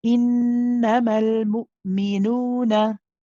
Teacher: So no ghunna in the mad waw, which can be tricky because you've got the ghunna just before it in the first noon and then the ghunna after it in the noon after it as well.